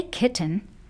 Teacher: you say kitten because kit is stressed